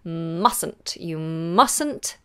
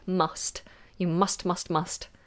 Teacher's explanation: pronounce that T at the end of must n't alright but if it's must on its own just the word must then you must pronounce that T